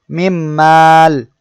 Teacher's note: ফুতিহাত মিম এর উদাহরণ মিমাল এখানে নুন সেকেন্ডের পরে মিম আসছে এখানে আমাদের মিলিয়ে পড়তে হবে গুন্নাহুর সহিত